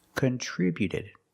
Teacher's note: the t before the ed is between vowels. So it's a fast d.